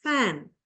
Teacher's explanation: first sound is voiceless labiodental fricative